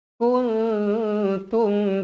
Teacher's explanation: Ikfa Hakiki dibaca dengung dengan kadar dua harakat